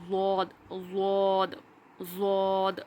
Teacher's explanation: उसके बाद है वाद, ज़बान की करवट, یعنی کہ زبان کی جو سائیڈ ہوتی ہے اوپر کے دانتوں کی جڑوں سے جب لگتی ہے تو ہمارا ضاد ادا ہوتا ہے. زبان کی کروٹ یا تو رائٹ والی یا لیفٹ والی.